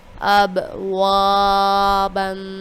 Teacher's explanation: الف سے پہلے زبر ہے یعنی کہ الف مدہ ہے، اس وجہ سے ہم نے یہاں پہ لمبا کیا ہے